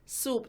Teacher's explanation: kalau misalkan huruf sin, su, pangkal lidahnya turun.